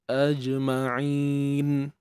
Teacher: AJM begitu Jadi hukumnya Mad Ar sukun kalau dua harakat tu kita hanya baca Ain ni dua harakat a lepas tu terus matikan Nun